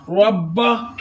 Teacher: सुबुदू रा मोटा यानी पुर पढ़ेंगे। बा मुशद्दद वाला हरफ 2 दफा पढ़ा जाता है, एक दफा अपने से पिछले मुतहर्रिक हरफ के साथ, एक दफा अपनी हरकत के मुताबिक।